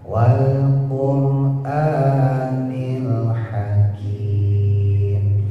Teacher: rohnya tebelin karena jatuh setelah dom